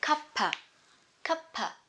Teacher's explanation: cup of tea or you can link them together cuppa